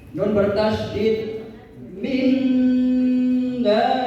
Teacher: dibaca dengung yang lama yaitu 3 harokat. Nun bertasdid minda. Ya, jadi dengung itu mengalir udara ke hidung.